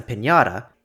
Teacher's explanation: English has no palatal nasal, so ñ is usually approximated to the cluster [nj] as in [pʰɪnjɑɾə], or it could get mispronounced as a plain n.